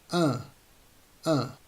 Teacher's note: it's a nasal sound so you need to let air go through your nostrils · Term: second nasal sound